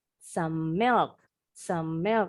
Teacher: Nah, huruf E-nya kan silent. Huruf M-nya konsonan. Di depannya ketemu konsonan lagi yang bunyinya sama. Gabungin aja.